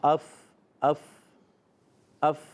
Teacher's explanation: اوپر کے دانتوں کے کنارے اور نچلے ہونٹ کے تر حصے سے ادا ہوتا ہے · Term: فا کا مخرج